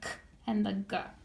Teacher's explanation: Throat scrapers are made in the very, very back, the k and the g